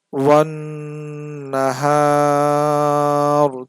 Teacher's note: থামলে হবে ওয়ান নাহার, তিন আলিফ টান হবে